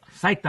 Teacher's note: Accent is on the first syllable.